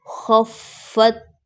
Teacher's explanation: یہاں پر خیال رکھنا ہے کہ تا کی آواز پلٹ کر نہ آئے، کیونکہ یہ قلقلہ نہیں ہے۔